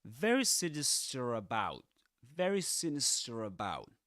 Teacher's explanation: in standard Southern British English, you don't pronounce the R at the end of a word, except there's a vowel sound right after it